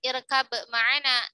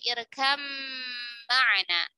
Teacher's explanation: Jadi bukan irkab ma'ana, tetapi irkam ma'ana. Ba-nya melebur sempurna ke huruf mim.